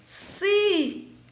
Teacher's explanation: Então, eu tenho si, que ela é a tônica, e eu tenho lá, e eu tenho o ba, que são duas sílabas átonas. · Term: sílaba tônica